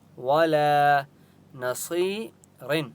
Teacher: ولا نصیر, یا مدہ ہے, صاد کو ایک الف کی مقدار کھینچ کر پڑھیں گے اور صاد مستعلیہ میں سے اس لیے صاد کو موٹا پڑھیں گے. وقف کریں گے.